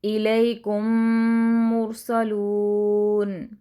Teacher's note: مثال کے طور پر الیکم مرسلون، یہاں پر دیکھیے میم ساکن کے بعد میم ہی آ گیا ہے تو ہم نے دونوں کی آوازوں کو ایک دوسرے میں مکس کر دیا ہے، مدغم کر دیا ہے